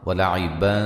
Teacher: یہاں ولعبا نون تنوین کا باریک اخفا ہے، ٹھیک ہے، ملانے کی صورت میں۔